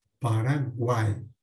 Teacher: Aqui a palavra Paraguai possui 3 sílabas, e na última sílaba nós temos aqui 3 vogais numa única sílaba, Paraguai. Vogais e semivogais numa única sílaba. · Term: tritongo